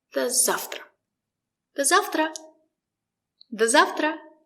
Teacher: The letter V is pronounced as f.